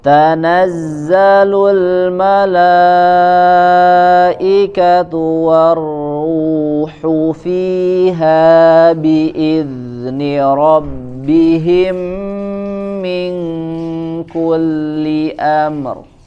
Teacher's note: Fiha biizni rabbihim, ada tambahan gunnah, kemudian mingku sama juga di situ ada tambahan gunnah, ditahan dan tidak dibaca langsung · ada tambahan gunah ditahan dan tidak dibaca langsung